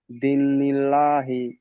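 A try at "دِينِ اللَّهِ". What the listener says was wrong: দি বলে টান দিতে হবে দনিল্লাহি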